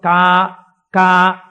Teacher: కే అన్న దాంట్లో కా కా పలకాలంటే ఎక్కడ పలకాలి? కంఠం దగ్గర పలకాలి. కా కా అంటే ఇక్కడ పలకాలి.